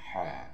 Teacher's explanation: Ha ini maksudnya di tengah tenggorokan.